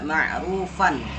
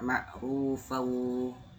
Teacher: Jadi tidak dibaca ma'rufan tapi dibaca ma'rufau. Dan plus dibaca gunah. Gunah itu ditahan.